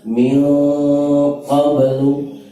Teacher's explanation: karena qaf tebal maka nun dia juga ikut tebal. Min langsung ke tebal. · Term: ikhfa